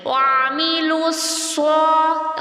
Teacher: سیٹی بھی آئے گی، زبان کی جڑ بھی تالو کی جانب اٹھے گی، 2 کاؤنٹس تک کھینچیں گے بھی. وعملوا لام کے نیچے زیر ہے آگے، تو اس کو ہم نچلے ہونٹ کو پھیلا کر ادا کریں گے.